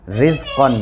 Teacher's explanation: रा के नीचे ज़ेर है इसलिए ये रा बारीक पढ़ी जाएगी